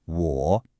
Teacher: It is not a flat W. It's a dipping tone. You have to feel your voice go down and then come back up a little. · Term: third tone